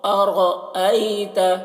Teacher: دیکھیے را کے اوپر زبر ہے تو را کو پر پڑھیں گے